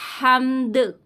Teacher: دال میں آواز پلٹ کر آئے گی